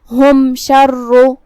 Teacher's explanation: یہاں میم کو ظاہر کرنا ہے اور بغیر غنہ کی حکم کو ادا کریں گے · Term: اظہار شفوی